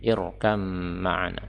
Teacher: kata yang ada ba sukun Tetapi dia diidgamkan ke dalam mim yang berharakat fathah